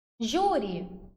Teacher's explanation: Paroxítona por quê? Porque a sílaba mais forte é o Ju.